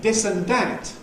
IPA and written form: ˈdɪs ən ˈdæt (this and that)